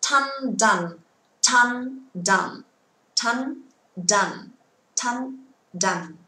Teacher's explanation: Nhớ âm t bật mạnh và âm d cũng bật mạnh nhưng rung. T không rung, d có rung. Cứ xanh là không rung, unvoiced, và voiced ở bên màu đỏ là có rung.